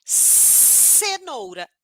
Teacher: esse ponto articulatório é chamado de língua alveol por quê Porque a minha língua tá encostando ali nos meus dentes nos meus alvéolos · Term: modo fricativo